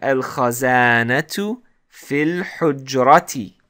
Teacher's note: So notice here that I didn't pronounce the hamzat wasl. When I said fil, I jumped all the way to the lam here.